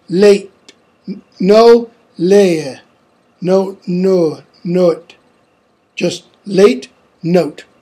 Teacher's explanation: Retention of strong R everywhere. And less tendency than British English to introduce a glide after the vowels E, A, and O.